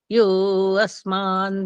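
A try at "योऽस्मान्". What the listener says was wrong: यो अस्मान नहीं बोलना, बाकी ठीक है। इसमें बोलना होता है योस्मान, ऐसे बोलना होता है।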